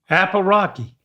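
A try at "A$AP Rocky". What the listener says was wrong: Apple. You're really taking liberties with ASAP. There's no Apple. Well, you can still say the S. Asap.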